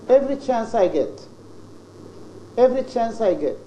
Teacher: you start with medial, then high, then fall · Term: 3-1